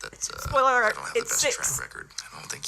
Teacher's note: the vocal fry has got to stop